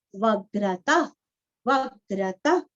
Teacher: विसर्ग का हल्का सा फ